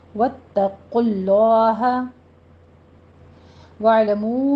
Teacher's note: वत्तकुल्लाह वालमू में जो हमारे पास कायदा आ रहा है, ये वाव मद्दा के ऊपर मद्दे मुनफसिल जायज़ हो रही है, इसको 4 काउंट करेंगे